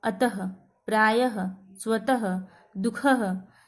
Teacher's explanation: ये जो चिन्ह होता है हमेशा वर्ण के बाद आता है। उच्चारण करते समय हल्के ह की ध्वनि निकलती है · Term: विसर्ग